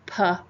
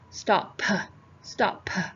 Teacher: that P is just a slight aspirated P it's not PA stop stop we don't want to over emphasize